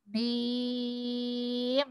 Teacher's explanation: Mimnya masuk lagi ke hidung.